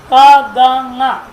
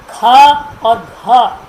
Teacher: बोलते वक्त ही महाप्राण अधिक प्राण का प्रयोग होता है।